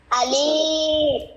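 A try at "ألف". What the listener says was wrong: no no no আলিফ লম্বা হবে না একটু শোনেন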